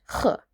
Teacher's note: a sound we don't really have in English. It's throaty, breathy sound from the back of the throat. H, kind of like the h in loch.